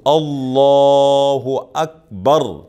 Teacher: لفظ اللہ کے لام کو موٹا پڑھیں گے، پر پڑھیں گے